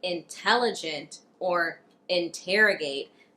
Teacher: in words like intelligent or interrogate, we have that true T sound after the N